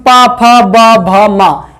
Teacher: पा वर्ग में हमेशा ओष्ठ का प्रयोग होता है